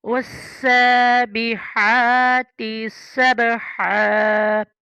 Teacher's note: आगे सीन में सीटी की आवाज़ है।